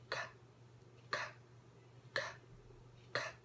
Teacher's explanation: made at the back of the mouth with the back of the tongue